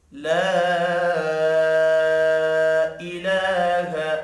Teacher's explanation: لا الف کے اوپر چھوٹی مد ہے، 3 الف کے برابر کھینچ کر پڑھیں گے۔